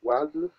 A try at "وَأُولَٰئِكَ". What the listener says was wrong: Don't say وَال. It is waf, look, waw, fatha, wa, alif, dhamma, u. Then we have waw without vowel, lam, erect, fatha, madda, la, hamza, kasra, ika, fatha, ka, wa, u, la, ika.